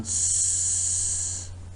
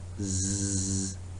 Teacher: I gave a demonstration on this, that put your finger or your thumb on the Adam's apple and produce the sound s. There is no vibration at all. But when you say zzz, you can feel the vibration